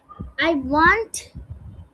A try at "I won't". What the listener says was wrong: ওয়ান্ট না, এটা ওন্ট। ওন্ট।